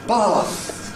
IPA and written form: bɑːθ (Bath)